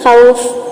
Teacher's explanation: कसर यानी के दो हरका के बराबर लंबा करना ये बेहतर है